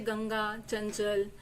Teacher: अनुस्वार का ही प्रयोग किया जाता है, लेकिन उच्चारण में वो पंचमाक्षर की ध्वनि में उच्चारित होता है।